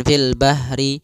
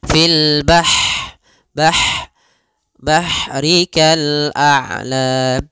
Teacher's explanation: Ha, sifat ha di sini hati-hati jangan dibaca dengan ha besar, jangan fil bahri, tapi dia ha pedas, lembut, dan juga dia punya sifat hamas, mengalirnya nafas.